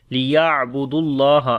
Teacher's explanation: توسط ہے، دال کو ڈائریکٹ لام کے ساتھ ملائیں گے تو اللہ کے نام سے پہلے دال کے اوپر پیش آ گئی ہے تو اس وجہ سے اللہ کا نام موٹا پڑھیں گے ، لمبا بھی کریں گے، لیعبدوا اللہ مخلصین، خا کے اندر